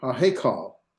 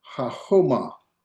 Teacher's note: Now, that doesn't change the pronunciation. You're not doubling in the pronunciation, you would pronounce this as if there was no forte, because there is not a forte. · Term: virtual doubling